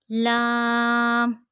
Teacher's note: ज़ुबान का किनारा और दांतों की जड़ के ऊपर ताल्लुक़ की जाने वाले हिस्से से।